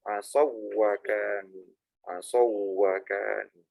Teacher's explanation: Huruf wawu itu suara nggak masuk hidung sebetulnya. Lain dengan nun sama mim. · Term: huruf bibir